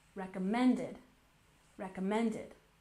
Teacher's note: we have a subtle stress on the first syllable with the main stress on the third.